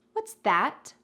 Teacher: You're emphasizing that, because you're pointing to that dessert